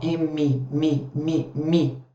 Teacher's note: é uma consoante bilabial